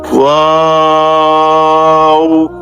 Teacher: দুই ঠোঁট গোল করে শুরু হবে, দুই ঠোঁট গোল হয়ে শেষ হবে, মাঝে কিছু টাইম মুখ খুলে থাকবে।